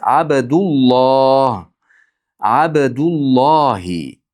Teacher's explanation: ikkita kalima bir-biriga qo'shib o'qilganda o'rtasida bir vav orttirib o'qilinadi. Abdulloh, bu yerda xuddi vav bordek o'qilinadi.